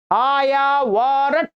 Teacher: ट में हलंत ध्यान रखेंगे, ट में किसी अ का उच्चारण नहीं लेना